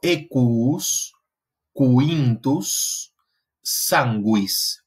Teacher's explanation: es un sonido que desarrolla lo que se conoce como un apéndice labiovelar, y es lo que transcribimos como una W, y corresponde a ese sonido U. · La U que le sigue a la grafía Q o a la grafía G es una U que se pronuncia siempre, ¿sí? Es una U que se pronuncia siempre, pero que se considera un apéndice del sonido base, del sonido velar base.